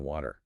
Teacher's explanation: aggressive lip rounding for sounds like the W in water